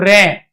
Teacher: जब हम र का उच्चारण कर रहे हैं तो जीभ हमारी क्या कर रही है? कांप रही है। कंपण कर रही है। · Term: प्रकंपित, कंपित